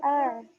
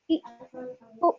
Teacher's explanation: عین کی آواز کتنی نرمی سے نکل رہی اور حمزہ کی آواز جھٹکے سے اور سخت ادا ہو رہی